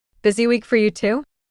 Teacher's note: That little rising tone at the end makes it a question. Makes it friendly.